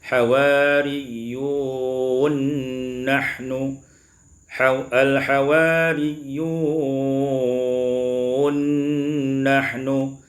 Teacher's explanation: taklil e Isa pada ayat yang ke52 ini diwasalkan idamun Nun diidamkan Nun pada Nun